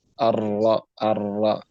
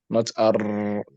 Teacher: You roll your tongue. You have to not roll, but you have to vibrate your tongue.